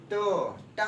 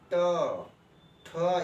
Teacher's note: उसके बाद देखिए ट, टा जो होता है तालु के और ऊपरी भाग में जाके वहां पे जीभ टच कर रही है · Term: मूर्धन्य